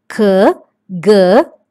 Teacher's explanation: tongue is raised towards soft palate